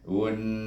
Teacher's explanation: nun bertasydid, maka kita baca dia dengan wajib gunnah 2 harakat. Un.